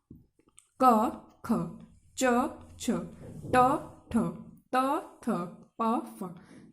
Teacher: अपने वर्ग के पहले व दूसरे वर्ण व्यंजन अघोष होते हैं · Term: अघोष व्यंजन